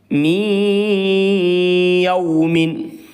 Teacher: اس میں ادغام معال غنہ ہوگا، کیونکہ نون ساکن کے بعد حروف ادغام کے 6 حروف میں سے یا آ رہی ہے ، اس لیے نون ساکن میں ادغام معال غنہ ہوگا، یعنی